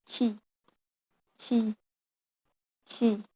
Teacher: And then sh sound, sh, sh, sh. Sh sound is fricative voiceless on postalveolar coronal place.